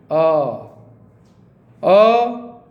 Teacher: आ बोलते आप देखिए कंठ से निकल रहा, आ कंठ से हो रहा।